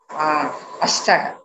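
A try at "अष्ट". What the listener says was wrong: Ashta. Please be careful because it does not have a visarga. It is ashta.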